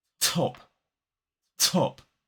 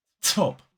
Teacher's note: when I say the T sound, I'm blowing air through that sound. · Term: aspiration